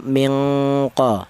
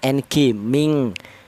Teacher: Kalau tingkat kesamarannya rendah, otomatis dengungnya lebih tinggi atau lebih dominan. Jadi nama artinya ikhfa adna itu dengung lebih dominan daripada samarnya